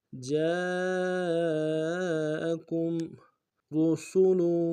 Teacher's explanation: را کو موٹا ادا کریں گے، سین کی سیدھی باریک ہوگی · کاف کو میم ساکن کے ساتھ ملانا ہے، میم ساکن میں غنہ کریں گے